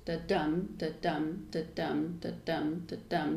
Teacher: a line of 10 syllables that essentially goes from unstressed to stressed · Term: iambic pentameter